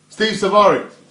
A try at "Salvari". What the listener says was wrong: In pronounce the L properly. S-A-L. Salad, yeah. It's salad, it's salad days.